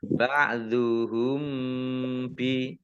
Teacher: mim sukun bertemu dengan huruf ba, bacaan ikhfa safawi, dibaca samar-samar